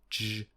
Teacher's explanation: is a voiced post-alveolar affricate because they are repair their only difference is voicing now please